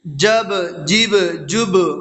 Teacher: با حروف قلقلہ میں سے ہے اور با کے اوپر جزم ہے تو اس میں قلقلہ ہوگا